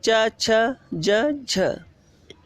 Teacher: स्पर्श संघर्षी व्यंजन कौन कौन से हैं? इनके उच्चारण में स्पर्श का समय अपेक्षाकृत अधिक होता है एवं बाद वाला भाग संघर्षी हो जाता है।